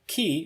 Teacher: The K in ki is aspirated